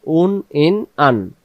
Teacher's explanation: হামজা অক্ষর হলকের প্রথম থেকে শক্ত করে পড়তে হয় তাহলে দুই অক্ষরের মাখরাজ একই উচ্চারণের স্থান একই কোন পার্থক্য নেই